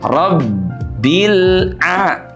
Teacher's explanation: Huruf ba itu punya sifat syiddah ya, Sahabat Al-Qur'an. Huruf ba itu tidak dibaca dengan suara mengalir.